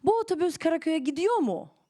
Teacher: your voice goes up once you are using mu, because that means pretty much the question